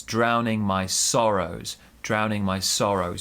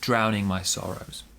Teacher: big stress on sorrows small stress on drown